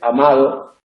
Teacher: En posición intervocálica tenemos este alófono, la D aproximante, amado, una D más aproximante sería fricativa, no oclusiva como la que tenemos al principio.